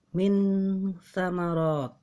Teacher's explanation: Cara membacanya adalah samar antara izhar dan idgham. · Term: ikhfa